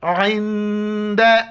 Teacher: नून के ऊपर साकिन है तो यहाँ पर नाक में आवाज़ पैदा करनी है, आइन को गले से अदा करना है।